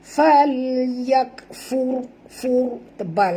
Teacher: fur ni, ra ini kena baca tebal, kerana ra ini mati huruf sebelumnya baris hadapan. Jadi kita kena baca tebal.